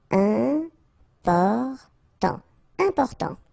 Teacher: you've got this EM, and after that it's a consonant, so it is here nasal